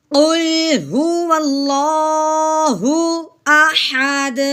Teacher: تو جب ساکن ہوا تو وہ دیکھا تو وہ حروف کلکلا تھا، جو حروف کلکلا میں سے دال آ گیا ہے، تب اس کو ہم کیا کریں گے، ہلا کے پڑھیں گے